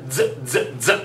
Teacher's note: it is going to most likely have kind of a dz sound to it